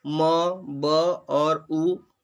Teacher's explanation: तीनों म, ब और उ ओष्ठ वर्ण हैं